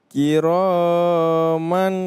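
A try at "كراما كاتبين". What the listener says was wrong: Kepanjangan lagi. Tanwin ketemu dengan huruf kaf, maka dia ikhfa. Kiraman katibin.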